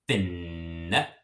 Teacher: I'm going to have kind of a pause between the two N's, and I'm going to kind of elongate that N sound a little bit. So fin. And it's not fin.